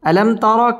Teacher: র উপরে যদি জবর অথবা পেশ হয় র পুর করে পড়তে হয় পুর মানে হচ্ছে মোটা